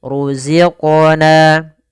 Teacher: ada mad tabi'i kasrah bertemu dengan ya sukun. Panjangnya dua harakat.